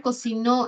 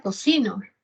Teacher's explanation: el acento de la palabra cocinó es agudo, pero lo puedo cambiar a cocino.